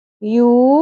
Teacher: واو مدہ ہے، واو ساکن سے پہلے پیش ہے، ایک الف کے برابر کھینچیں گے